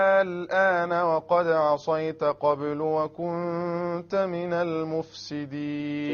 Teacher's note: Notice now, الآن 6 harakas. You cannot get longer than this. So this is the only word in the Qur'an where there is actually a proper sukoon after a letter of the mad.